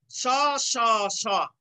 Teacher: তারপরে এবার দেখো তিনটি স, তালব্য স, মূর্ধন্য স, দন্ত স ধ্বনির উচ্চারণ। তালব্য স, মূর্ধন্য স, দন্ত স এই তিনটি ধ্বনিরই উচ্চারণ তালব্য স এর মতো। মূলত কি তালব্য স এর মতোই উচ্চারিত হয় তিনটি স, স স স, অর্থাৎ ইংরেজি এসএইচ ধ্বনির মতো।